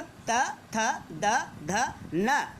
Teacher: दंत, दंत से उच्चारित होने वाले, दंत से बोले जाने वाले वर्णों को दंत्य कहते हैं। और इनके उच्चारण में हमारी जीवा दांतों को स्पर्श करती है